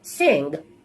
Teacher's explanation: This is a voiced sound. It takes place at the velum. And it's a nasal sound.